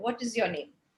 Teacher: so you use a falling tone what is your name you know so you go your tone goes down